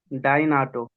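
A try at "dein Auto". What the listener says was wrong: ऑटो नहीं है बेटा, आउटो, आउ पढ़ना है, आउ, भाऊ, आउटो, जैसे उसमें भाऊ बोलते हैं मराठी में, भाई को, बड़े को भाऊ, तो आउ ऐसे याद कर लो, ताऊ, अरे ये वर्ड तो है ना हमारे पास यार, ताऊ, वो गाना था ताऊ हट जा।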